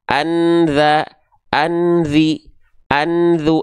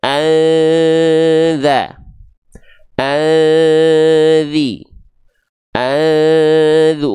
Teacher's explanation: enggak ada lagi bunyi konsonan an-nya · yang disamarkan dan didengungkan adalah bunyi konsonan n Kenapa bunyi konsonan n karena nun sukun bunyinya n fthatain domatain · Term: samar dan dengung